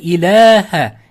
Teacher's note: Alif so'zda kelib, o'zida hech qanday belgi bo'lmasa, undan oldingi fathalik bo'lsa, mad tabiiy bo'ladi. Shunda 2 harakat cho'zib o'qiladi.